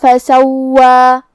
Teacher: حرف الواو پہ تشدید ہے، لہذا دو حرف کے برابر واو کو پڑھیں گے اور جو کہ اس پہ کھڑا زبر ہے تو یہاں مد الف ہوا، ہم اپنی آواز دو مد کے برابر لمبی کریں گے.